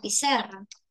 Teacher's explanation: la mayor fuerza de voz tiene la penúltima sílaba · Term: palabra grave